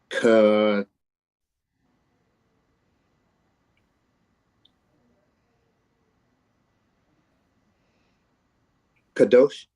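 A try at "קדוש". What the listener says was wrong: Except you're doing Pam's thing of shortening the ah sound. So can you say kadosh?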